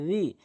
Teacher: এক নম্বর হচ্ছে জালের উচ্চারণ রি না বলে জি বলে, জিমের উচ্চারণ করে ফেলে। তো এখানে রি জিব্বার আগা দাঁতের আগা মিলিয়ে নর্মালি উচ্চারণ করতে হবে রি